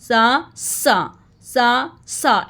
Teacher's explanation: सा पढ़ते हुए सीटी की आवाज़ बिल्कुल नहीं आनी चाहिए। सा पढ़ते हुए सीन की तरह नहीं पढ़ना, सा ऐसे इन दोनों को पास रख के पढ़े ताकि दोनों की आवाज़ डिफरेंट हो।